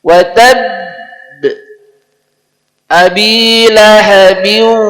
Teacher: tanda bukan sukun asli maka disebut Qalqalah Kubro secara hukum tajwid Qalqalah Kubro plus tasdid Nah jadi nampak kuat sekali